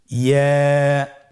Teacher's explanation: ইয়া হরফটি উচ্চারণের ক্ষেত্রে বারিক হবে এবং 1 আলিফ টেনে পড়তে হবে।